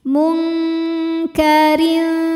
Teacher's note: Maka ra ini bacanya tipis, keadaan lidahnya rileks ya